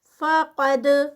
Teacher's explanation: قاف ہیوی اور آگے دال کا قلقلہ